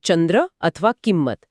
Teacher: કરતી વખતે સ્પષ્ટ થડકો લાગે છે જાણે કે આપણે કોઈ અડધો અક્ષર ન કે મ બોલી રહ્યા હોઈએ . દાખલા તરીકે ચંદ્ર અથવા કિંમત આ તીવ્ર અનુસ્વાર એક પ્રકારે